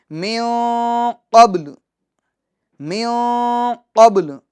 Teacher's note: قلقلہ ہوگا، یعنی جنبش ہوگی، حرکت ہوگی، آواز لوٹ کر آئے گی۔